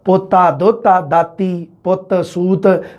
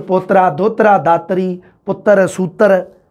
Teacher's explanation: ਪਰ ਮਾਝੀ ਦੇ ਵਿੱਚ ਰੈ ਦਾ ਉਚਾਰਨ ਹੁੰਦਾ ਮਾਝੀ 'ਚ ਪੋਤਰਾ ਦੋਤਰਾ ਦਾਤਰੀ ਪੁੱਤਰ ਸੂਤਰ ਐਵੇਂ ਬੋਲਿਆ ਜਾਂਦਾ ਮਾਝੀ